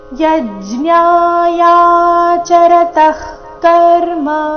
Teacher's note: ವಿಸರ್ಗದ ಉಚ್ಚಾರಣೆ ಇಲ್ಲಿ ಅರ್ಧ ಕ ರೀತಿ ಮುಂದಿನ ಶಬ್ದ ಕರ್ಮ ಕ ದಿಂದ ಪ್ರಾರಂಭವಾದ ಕಾರಣ